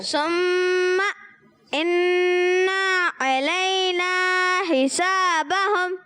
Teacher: علینا حرف مدہ کو ایک الف کھینچیں گے